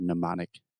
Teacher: you can kind of forget that first m in the word mnemonic it starts with an n in pronunciation